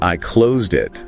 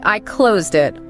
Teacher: It's like the T at the end of close is jumping over to the beginning of it. And it creates this really nice flow. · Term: linking